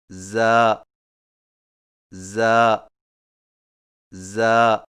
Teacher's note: زا کی ادائیگی میں زبان کی نوک کو سامنے والے نیچے کے دو دانتوں کے کناروں سے مضبوطی سے لگا کر باریک اور سیٹی جیسی آواز میں پڑھیں